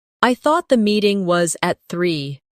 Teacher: Do you hear the soft connection between meeting and was?